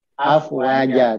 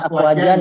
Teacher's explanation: meskipun dia fathatain, maka dia dibaca dengan cara seperti membaca mat tobi'i, dipanjangkan 2 harokat. Afwaja. Jadi jangan dibaca afwajan ya. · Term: mat iwat